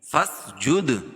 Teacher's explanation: دال پر قلقلہ کیونکہ یہ حروف قلقلہ کے 5 حرفوں میں سے جب ان پر جزم ہو تو وہاں قلقلہ ہوتا ہے